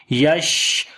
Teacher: ہو رہا ہے اور آواز منہ کے اندر پھیل رہی ہے، صفت تفشی کی وجہ سے آواز منہ کے اندر پھیلتی ہے اور صفت ہمس جو ہے وہ سانس جاری کرتا ہے